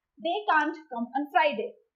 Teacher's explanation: Now talking towards the negative form can't, we tend to stress on the negative form of can the more in the sentence as compared to the positive can